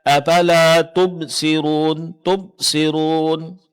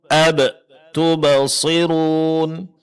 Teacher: huruf ba termasuk salah satu dari huruf qalqalah yang ketika dia sukun mesti dipraktekkan qalqalahnya, yaitu suaranya memantul. Seharusnya afala tubasirun, ab tubasirun.